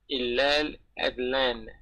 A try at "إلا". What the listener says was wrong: Not ilal, but illa adlan. Don't put a L. Don't put a L at the end of illal. Illa.